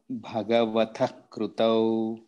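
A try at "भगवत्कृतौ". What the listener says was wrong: No, ta. You are saying Bhagavatah.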